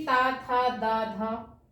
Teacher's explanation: इसमें हम तावर को रखते हैं, तावर, क्योंकि ता, था, दा, धा, इसका उच्चारण स्थान क्या होता है? दंत होता है।